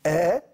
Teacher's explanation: يحبس الهواء الخارج من الرئتين عند نقطه المخرج ثم يفرج عنه مره واحده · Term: صوت انفجاري